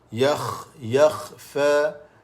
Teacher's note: Yakhfa huruf kha, hujung halkum. Kawasan dia halkum di hujung ni.